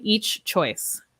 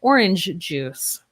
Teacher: Okay, one thing to be careful about is we can do this for almost all consonants and almost all consonant sounds, but we do not link the ch and j sounds.